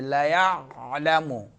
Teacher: جی عین جو ہے درمیان حلق سے